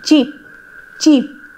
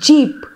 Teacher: we have effricates also they are combination of stops and fricatives cheap is an example of an unvoiced affricate cheap cheap and jeep is the example of voiced